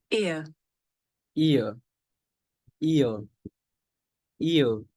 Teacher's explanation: the shape the mouth makes changes from the beginning of the sound to the end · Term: double vowel sound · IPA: /ɪə/